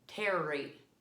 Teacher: bumpy part behind your teeth that's called your gum ridge and when we do our r we tend to take our tongue and kind of curl it back towards our gum ridge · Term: r sound